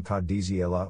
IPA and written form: kadˈdzaːle (Cazale)